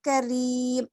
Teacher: را کے نیچے زیر ہے تو ہم یہاں پہ کیا کریں گے؟ باریک پڑھیں گے